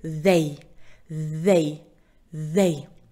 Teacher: Звонкий звук как его произнести нужно язык положить между зубами положите его не нужно его зажимать зубами и